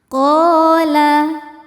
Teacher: Qala. Qa hukumnya mad tabi'i dhahiri sebab ada alif sebelumnya baris fathah. Cara bacanya panjang 2 harokat.